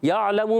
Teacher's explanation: یا علمو میں یا کو عین سے ملانا ہے، عین کی ادائیگی حلق کے درمیان والے حصے سے کلیئر کریں گے. لام پر زبر، میم پر پیش، حرکات کو نہیں کھینچیں گے.